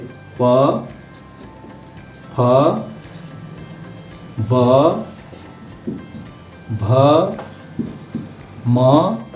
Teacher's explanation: ओष्ठ का प्रयोग, जहां ओठ का स्पर्श होता है स्टूडेंट, देखिए ओठ का ओ ओ औ प प, तो ये जो लाइन है तथा दादा के बाद वाला लाइन, वो जैसे प, फ, ब, भ, म, ये सारी चीजें ओठ के स्पर्श से होती है।